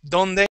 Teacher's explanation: Your tongue goes right up against the back of your teeth.